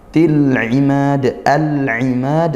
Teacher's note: Lam ta'rif bertemu huruf ain ya, dibaca jelas lamnya. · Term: izhar qamariyah